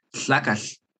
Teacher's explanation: it is kind of like a T, the plosive sound, happening at the same time that you're having that kind of L sound together. The L sound, your tongue is in the position of an L, ooh, but you're not voicing it like an L with your throat.